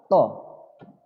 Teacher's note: Tapi kalau to, bibirmu sedikit mencucu.